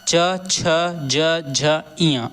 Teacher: इसका उच्चारण तालु से होता है